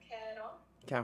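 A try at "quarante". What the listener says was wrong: 40. Again, French R, not a huge problem, but 40. 40.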